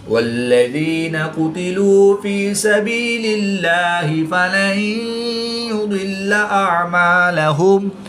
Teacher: نون ساکن کے بعد یا حرف یرملون میں سے ہے تو یہاں پر ادغام مع الغنہ ہوگا، یعنی غنہ کر کے پڑھیں گے